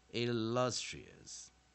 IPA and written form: ɪˈlʌstriəs (illustrious)